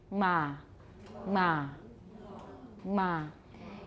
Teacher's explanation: the double articulations nasal velar + bilabial